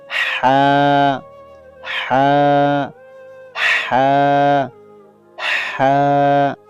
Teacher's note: হলকের মধ্যখান হইতে হা